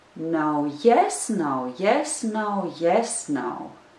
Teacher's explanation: it starts with the unstressed syllable no and it also ends with the unstressed syllable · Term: rhythm